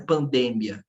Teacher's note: Cada sílaba, cada vogal aqui é destacada. A sílaba tônica reside na minha penúltima sílaba aqui